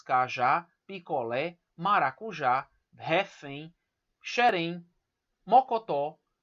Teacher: todas elas são oxítonas. Olha só, a última sílaba é a mais forte.